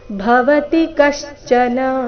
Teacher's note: ಭವತಿ ನಲ್ಲಿ ಭ ಮಹಾಪ್ರಾಣ ರಸ್ವ ತಿ ಕೂಡ ರಸ್ವ ಬರಬೇಕು